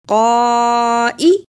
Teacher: قاف پر زبر اور بڑی مد ہے، اس کو بھی ادا کرنا اور حمزہ کو جلدی پڑھنا